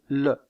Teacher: la pointe de la langue est contre les alvéoles et l'air passe sur les côtés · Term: constructive alvéolaire latérale